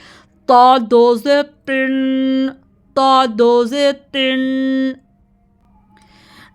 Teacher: صاد دو زیر سن ضاد دو زیر دن. طا بھی جو ہے نا یہ بھی حروف مستعلیہ میں سے ہے، اس کو ہم نے ہیوی پڑھنا ہے